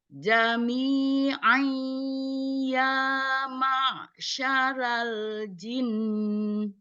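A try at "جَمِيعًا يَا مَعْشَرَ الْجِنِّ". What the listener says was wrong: Cuman ro-nya jangan lupa dibacanya bukan ra, tapi ro. Oke, kita ro-nya kita perbaiki. Jadi ro-nya itu ternyata bukan ra, tapi ro.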